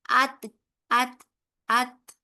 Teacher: जब हम इसको खत्म करते हैं ना आत आत आत तो आपको एक हल्की सी एयर आपको बाहर आती हुई महसूस होगी